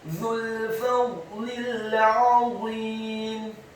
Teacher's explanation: Kata fadlil, huruf fa-nya dibaca fathah 1 harokat, huruf dha-nya dibaca sukun, tafkhim dengan posisi lidah kita di langit-langit atas, dan huruf dha yang sukun tidak boleh diqalqalkan atau dipantulkan. Kemudian huruf lamnya dibaca tipis, kasroh, cukup 1 harokat saja karena setelahnya langsung disambung huruf lam yang sukun.